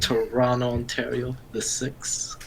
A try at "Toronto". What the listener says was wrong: Yep, you don't pronounce the second T. You sound like Toronto. Toronto.